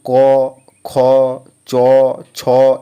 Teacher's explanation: অঘোষ বর্ণ উচ্চারণের সময় গলায় কোন কাঁপুনি হয় না।